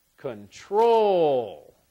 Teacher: I think it sounds best as control. So the stress on the second syllable.